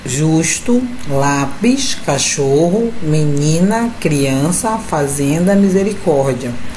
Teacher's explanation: nós temos alguns exemplos dos paroxítonas. Observe aí, na penúltima sílaba